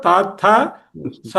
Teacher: తాథ సా అనేది పంటి వెనక ముందు పళ్ళ వెనక్కి తగులుతుంది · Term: దంత్యములు